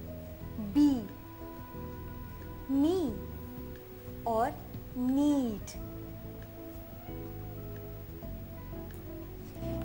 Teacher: यह एक वाल साउंड अथवा स्वर ध्वनि है। इसका तकनीकी नाम क्लोज्ड फ्रंट अनराउंडेड साउंड है।